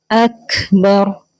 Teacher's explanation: تو اللہ کا نام یہاں ہم موٹا پڑھیں گے، ہیوی پڑھیں گے، منہ بھر کے. اکبر تو کاف میں ہمس ہوگا، یعنی کاف میں ہلکی سی کھا جیسی ساؤنڈ آتی ہے